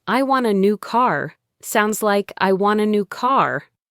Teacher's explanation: The phrase want a also sounds like wanna.